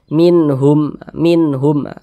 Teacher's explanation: Dibaca jelas, tak berdengung, pendek saja. minhum, minhum. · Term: izhar halqi